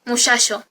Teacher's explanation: rehilamiento del fonema ch